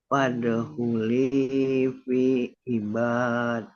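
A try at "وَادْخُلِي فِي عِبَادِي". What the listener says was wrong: Nah, itu daknya dibaca panjang dua ini. Ibadi. Oke, coba diulang.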